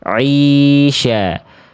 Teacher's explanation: Karena suaranya masuk ke dalam rongga hidung. Harusnya suara ain itu dirasakan dilafalkan semua keluar dari rongga mulut.